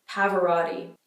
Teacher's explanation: in the North American accent, we turn all these T's that would be a hard T if you're from the UK into a kind of D sound